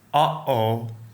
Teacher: It's the sound you make when you suddenly stop air flow in your throat.